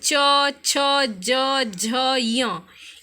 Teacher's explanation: अब च वर्ग जो है वह तालु से स्पर्श करते हैं, जैसे च, छ, ज, झ, य, ये सब क्या है, तालु से स्पर्श करते हैं।